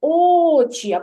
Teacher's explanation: коли гукаємо сила голосу більша на перший склад Отже над звуком о над голосним перший склад ми ставимо наголос